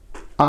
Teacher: आ जो है क्या है यह पश्च स्वर है